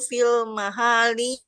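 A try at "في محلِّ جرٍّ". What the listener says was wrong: kalau nggak ada alif lam jangan dibaca pi, jangan ditambahin Bu. Fi mahali jarin, nggak ada huruf.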